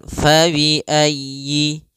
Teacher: di sini sempurnakan huruf y-nya, ditekan fabi'ayyi, kemudian langsung ke a